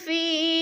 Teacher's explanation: یا ساکن سے پہلے فا کے نیچے زیر ہے، تو یا مدہ کو بھی 1 الف 2 حرکات کے برابر کھینچ کر پڑھنا ہے